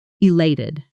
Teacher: Strong, clear beat on that second syllable.